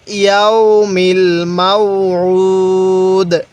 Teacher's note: ওয়াকফের সময় একটু এখানে ধাক্কা দিব, কারণ দালটা হলো কলকলার হরফ